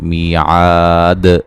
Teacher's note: جب وقف کریں گے دال پہ قلقلہ کو واضح کریں گے